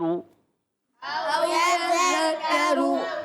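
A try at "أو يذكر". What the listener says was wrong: حمزہ کی آواز آئے، عین کی نہیں۔ او یذکر، او یذکر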